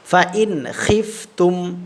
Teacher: আচ্ছা, তাহলে এখানে আমরা ইজহার করে পড়ব, এই নুন সাকিনে কোনো গুন্না করব না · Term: নুন সাকিনের ইজহার